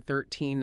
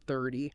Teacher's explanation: With 13, the stress is on the second syllable. With 30, it's on the first. You almost have to exaggerate it when you're practicing.